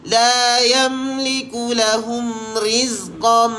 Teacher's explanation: Tanwin dimasukkan kepada mim dengan bacaan dengung. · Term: idgham ma'al gunnah